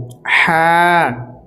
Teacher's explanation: এটি হচ্ছে বড় হা, এটি একদম হালাক থেকে বের হবে